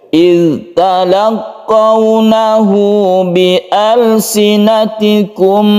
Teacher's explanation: hak domir yang diapit oleh dua huruf hidup, maka haknya ini dibaca panjang satu alif. Ini disebut dengan mad silah qasira.